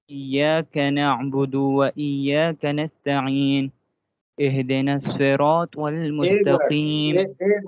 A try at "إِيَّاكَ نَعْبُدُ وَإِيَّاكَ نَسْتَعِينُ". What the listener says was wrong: نستعین میں یہ جو نستعین ہے نا، نستعین، ٹھیک ہے، نستعین سین میں اس کو کہتے ہیں حروف ستیرہ، سیٹی والے میں جس طرح سیٹی کی آواز ہوتی ہے. نست بالکل کرسٹل کلیئر ہونا چاہیے. نست آپ نے پڑھا، نست ہے بالکل اس کو ہلکا سا پڑھا ہے، یہ اس کا حق ادا نہیں ہوا.